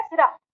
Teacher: वो खिंचाब रा पे है। सी पे नहीं है।